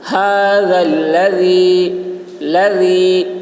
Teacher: ذال کی آواز باریک ہوگی